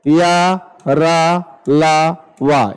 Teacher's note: या को तालु कहते हैं, रा को मूर्धा कहते हैं, और ला को दंत कहते हैं, वा को दंतौष्ठ कहते हैं। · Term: अर्ध स्वर